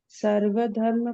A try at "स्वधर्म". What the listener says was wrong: नहीं है, सर्वधर्म नहीं है, वो तो भगवत गीता में है। स्वधर्म, स्व आधा सा पूरा वा, स्वधर्म।